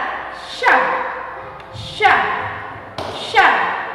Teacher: pada huruf sya dilapaskan dengan mempertemukan lidah bagian tengah dengan langit-langit atas